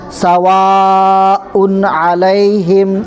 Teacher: سواء میں یہاں پر مد کو 4 الف کے برابر کھینچیں گے، اس کے بعد یہاں پر اظہار کریں گے.